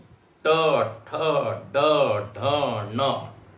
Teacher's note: ट ठ ड ढ न, टू से ट वर्ग लेते, और र ये मूर्धा से उच्चरित होते हैं। रू मतलब ऋषि वाला रू, और टू मतलब ट वर्ग, और फिर र ये मूर्धन्य है।